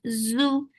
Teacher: give buzzing sound and make it short